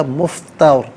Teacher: را ساکن ما قبل تا پر زبر ہوگا، تو اس صورت میں پر کر کے پڑھا جائے گا